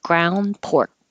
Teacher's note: And you don't hear the K because your tongue goes to the K position and holds it.